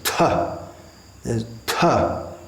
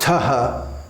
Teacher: there's a breath sound quite a strong breath sound it's not Taha the tub tub it's with a strong breath